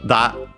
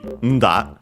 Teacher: these voiced consonants were actually prenasalized in Japanese at the time, classical Japanese, so da would be nda, and yeah, so it makes sense to nowadays it stayed but written with this and then da.